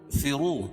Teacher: واو مدہ، اس کو ایک الف کے برابر کھینچ کے پڑھیں گے. اور را کے اوپر پیش ہے تو را کو پر پڑھیں گے.